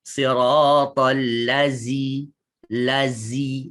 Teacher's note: Dia ketatkan giginya. Tuan-tuan baca demikian telah mengubah huruf zal kepada huruf zai.